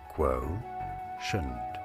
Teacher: You do want to stress on that first syllable. Both British and American pronunciations are similar as quotient.